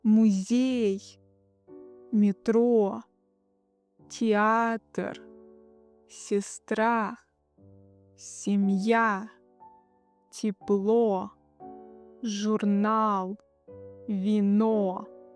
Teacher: Here the stress is on the second syllable.